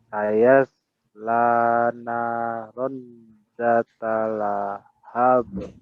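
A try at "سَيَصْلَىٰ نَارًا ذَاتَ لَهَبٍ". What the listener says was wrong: Naron. Ada ikhfa ditahan juga. Sayasla naron dzata lahab.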